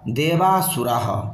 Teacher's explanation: উদাত্ত হওয়ায় অনুদাত্তং পদেমেজম এই পরিভাষা সূত্রানুসারে অবশিষ্ট স্বর অনুদাত্ত হলে অন্ত অকার ব্যতীত পূর্বপূর্ব তিনটি স্বরই অনুদাত্ত